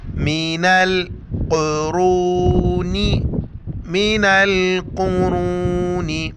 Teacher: ہمیں را کو موٹا کر کے پڑھنا ہے، پر پڑھنا ہے، قاف کو اور را کو موٹا کر کے پڑھیں گے